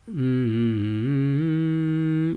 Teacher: your tongue stays still and the sound vibrates in your nasal passage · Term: nasalization